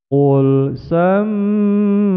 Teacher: ditekan dua ketukan mim berharokat tasdid guna musyaddah